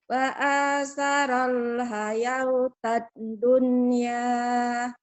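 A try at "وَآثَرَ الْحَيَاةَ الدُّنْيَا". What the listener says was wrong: Jangan hayau. Wahnya kan nggak ada tanda apa-apa. Berarti jangan dibaca. Wa asaral hayatad dunya. Hayau. Wawnya anggap tidak ada. Wawnya jangan dibaca. Waunya jangan dibaca. Tak coret ya. Tak coret. Tak ada ini. Tidak ada. Jangan dianggap. Kenapa tidak dibaca?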